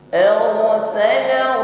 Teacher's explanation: Huwallazi ra sukun sebelumnya didahului harakat fathah. Yang pertama sifatnya takrir, irti'ad tarful lisan, ada getaran di ujung lidah. Syaratnya yang pertama harus ada getar.